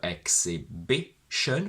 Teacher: on b we go back two syllables and we get that the x carries a little bit of a secondary stress meaning that this syllable is not as irrelevant as all the